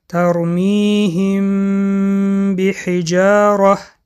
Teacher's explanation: حرف میم را پوشیده و با غنه میخوانیم لبها در این حالت به یکدیگر میرسند و سخت پخش کرده نمیشوند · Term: اخفای شفوی